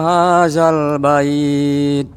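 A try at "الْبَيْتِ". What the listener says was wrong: Taknya dikasih angin Bapak. Bait. Jadi kayak mohon maaf ya, kayak orang ludah.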